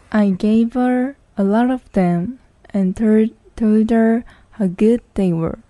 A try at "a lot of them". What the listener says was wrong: 여기서 them 있는데 강세가 없을 때는 네. them이라고 하지 말고 그냥 th를 날려버리면 돼요. 자, a lot of them 하지 말고요. A lot of them. 이렇게 한 번에 날아가는 거예요.